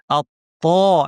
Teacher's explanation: আপনারা ছবিতে দেখতে পাচ্ছেন ত্ব উচ্চারণের সময় জিহ্বার মাঝখান পেছনে উঠে গিয়ে আমরা আওয়াজটাকে উপরে ঠেলে দিচ্ছি এবং আওয়াজটা তালু এবং জিহ্বার মাঝখানে চাপা পড়ছে।